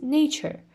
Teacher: cheer is the final syllable and also it has a schwa sound it is unstressed